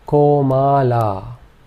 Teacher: In this case, all three vowel sounds are long.